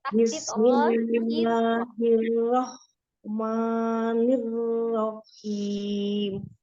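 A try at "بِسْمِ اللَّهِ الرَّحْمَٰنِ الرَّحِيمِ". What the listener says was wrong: Nirrohim. Tidak ada takdid haknya. Walaupun baca terpisah tetap di harokat yang pendek. Tidak ditasdidkan.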